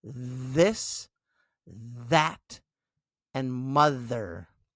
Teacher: it can be voiced, where your vocal cords vibrate, like in this, that, and mother. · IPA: /ð/